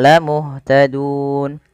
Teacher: Kemudian pada lafal dun ada bacaan mad arid lisukun, yang dimana kita boleh memilih untuk memanjangkan lafal dun dengan mematikan nunnya